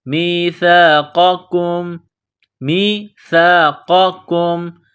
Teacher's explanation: قاف کو موٹا کرنا ہے، اس کاف کو باریک کریں گے